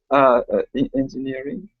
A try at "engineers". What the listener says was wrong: No, these are not engineering. It's engineers. You misread that when you read it the first time. Yeah, not engineering. Engineers.